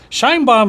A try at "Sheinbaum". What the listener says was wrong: No, it's because you're pronouncing it in English. It's Sheinbaum.